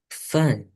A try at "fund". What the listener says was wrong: There is a D.